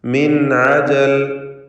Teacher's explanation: സാക്കിനത്തായ നൂനിനെ ഇൽഹാർ ഹൽക്കി നൽകി മണിക്കാതെ വെളിവാക്കണം. മിൻ അജൽ ശേഷം ഐനാണ് ഹൽക്കിൻ്റെ അക്ഷരമായ ഐന് വന്നു എന്നതുകൊണ്ട്.